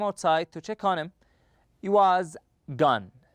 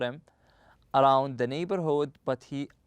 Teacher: the H sound is often left out